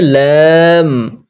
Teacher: জীবের আগাটা ওপরের আটটি দাঁতের আটটি দাঁতের সঙ্গে লাগিয়ে উচ্চারিত হয় আটটি দাঁতের এবং ওপর তালুতে লাগবে উচ্চারণ হবে লাম এটাও তিন আলিফ লাম তিন আলিফ টান দিয়ে পড়তে হয়